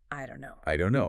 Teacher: And the vowel in don't might reduce become shorter or weaker. The vowel in no might also shorten a bit. · The don't and no link up. That final T in don't often gets dropped or becomes a very quick glottal stop sound. And the vowel in don't might reduce, become shorter or weaker.